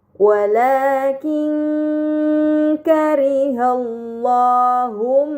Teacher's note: Kemudian pada kata walakin kariu terdapat nun sukun bertemu dengan huruf kaf ini dinamakan ikhfa hakiki. Maka nun sukun dibaca secara samar dengan gunah yang dipanjangkan